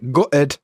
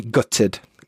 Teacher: for me, I glottalize the T, so gutted, but some people will pronounce the T gutted